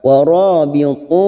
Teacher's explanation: ra fathah bertemu alif 2 harokat